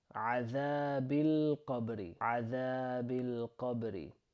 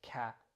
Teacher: That's very similar to the English letter ka. We're trying to make a heavier sound and it's a bit further back in the throat. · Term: Q letter